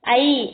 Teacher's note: ஐ அப்படின்னு உச்சரிக்கும் போதே நமக்கு தெரியும் என்ன உச்சரிப்பு முடிவுல என்ன வருது ஐ அப்படின்னும்போது ஈ சவுண்ட் வருதா